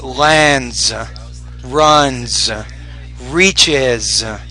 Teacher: that s sound you want to make it more of a z after a voice consonant